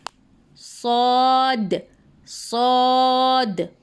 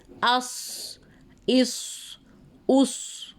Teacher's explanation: और सौद में सीटी जैसी आवाज़ नहीं आती। सौद, सौद। · सौद में मुंह को पुर यानी मुंह को भर के पढ़ेंगे और थोड़ा सा हैवी करके पढ़ेंगे, ठीक है। और सौद में सीटी जैसी आवाज़ नहीं आती।